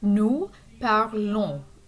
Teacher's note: So the nous form is going to be this ONS ending for regular ER verbs. And notice again that the S is silent. The ON is a nasal sound.